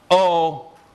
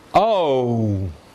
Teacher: the lips are rounding as you say the vowel okay so we indicate that with the oops with the w